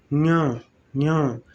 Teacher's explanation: श्वास जो है मुख और नासिका दोनों से निकलती है, मुख से अधिक, नासिका से कम